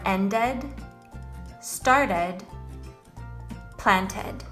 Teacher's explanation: the past tense verbs where the ed ending makes the sound of a short E and a D.